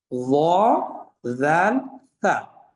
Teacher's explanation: এগুলো একেবারে আগা থেকে বের হবে এবং এটা একেবারে সফট হবে, নরম করে পড়তে হবে।